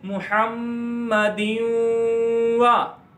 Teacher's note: تو ہم تنوین کو واو کے ساتھ ملا دیں گے, محمدین وا سے بن جائے گا محمدین وا, اور واو میں گنہ کر کے بھی پڑھتے ہیں. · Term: ادغام